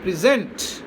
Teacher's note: So here we are using it as verb. When we are using it as verb, the accent changes and it shifts to the second syllable.